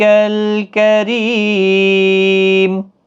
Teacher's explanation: کریم ری یہاں پر را زیر کی وجہ سے باریک پڑھا جائے گا، یا مدہ بھی ہے، اور وقف کس حالت میں جب میم ساکن ہوگا تو 3 سے 5 الف کی مقدار کے برابر کھینچ کر وقف کریں گے